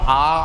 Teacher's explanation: पहले आप विवृत को याद करिए। विवृत का मतलब खुला हुआ, आ मुंह खोल के बोला जाता है